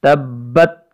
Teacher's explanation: با چونکہ مشددہ ہے اس لیے اس با مشددہ پہ تھوڑا ٹھہراؤ کریں گے · اس لیے اس با مشددہ پہ تھوڑا ٹھہراؤ کریں گے، تبت، دونوں ہونٹوں کے ترے والے حصے کو مضبوطی کے ساتھ جماؤ کے ساتھ جم کر اس کو ادا کریں گے